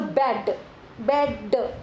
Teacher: Which begin to vibrate and make noise. The air that escapes from your lips as they part suddenly, which results in the sound b.